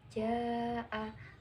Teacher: Ja'a, bacaan mat wajib mutasil, sebab mat bertemu hamzah dalam satu kalimat, panjangnya 2,5 alif atau 5 harokat.